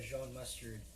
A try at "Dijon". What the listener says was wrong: Dijon? Like there's a D there?